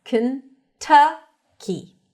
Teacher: Stresses on the second syllable. That's a cup sound. Kentucky. It's a bit more open than a schwa sound.